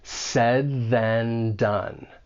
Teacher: said ends with that final D sound your tongue is at the top part of your mouth behind your front teeth and you're going to release right into that voice th and